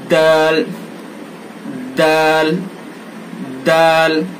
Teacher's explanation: زبان کی نوک اور ثناء علیا کی جڑ یعنی اوپر کے 2 دانتوں کی جڑ سے اس کو ادا کیا جائے گا